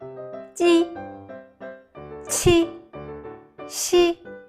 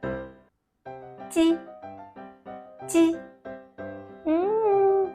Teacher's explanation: It is a sound formed by the front of tongue against the front part of your hard palate.